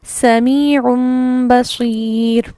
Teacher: جو نون کی ساؤنڈ تھی تنوین کی وہ نہیں پڑھیں گے، بلکہ یہاں پر ہم اسے میم پر مکمل کریں گے